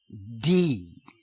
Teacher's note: if you add the sound of voice to the pressurized breath of tea the sound is called d